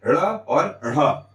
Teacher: हमारी जीभा उछल के मूर्धा को टच करती है और मूर्धा को टच करने के बाद झटके के साथ नीचे आती है। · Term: द्विगुण व्यंजन